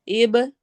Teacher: इब बा पे कलकला होगा